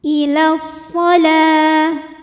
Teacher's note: alif lam menghadapi huruf syamsiyah yaitu shad. Maka alif lam tidak kita baca. Ilas shalah, lam at-tabi'i muqaddar karena ada baris fathah tegak di atas huruf lam. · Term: alif lam syamsiyah